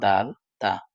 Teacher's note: জিহ্বার আগা সামনের উপরের দাঁতের গোড়ার সাথে লাগিয়ে উচ্চারিত হয়েছে